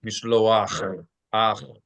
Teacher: The only oddity here is that with het, they pronounce the het as a cha, which is not a guttural sound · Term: Ashkenazi pronunciation